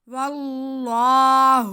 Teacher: یہاں پہ ہمارے پاس اس میں جلالت اللہ سے پہلے زبر ہے تو ہم اسے موٹا کر کے پڑھیں گے